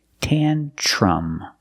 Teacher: Pronunciation, use the short a sound, tantrum. The tr makes a ch sound like chicken. Tan-ch plus the r, ch.